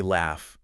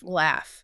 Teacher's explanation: Say laugh. Feel nothing. That's unvoiced F. Laugh. Yep, nothing.